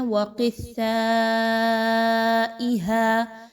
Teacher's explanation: وقثائھا، مد ہے، مد کو کھینچ کے پڑھا جاتا ہے ہمیشہ۔ قاف کو موٹا پڑھیں گے، سا کو باریک اور مد کی ادائیگی کو اچھے سے لمبا کر کے پڑھیں گے۔ · ملاتے ہوئے سا میں سیٹی کی آواز نہ آئے، نرمی کے ساتھ سا کی ادائیگی رکھتی ہیں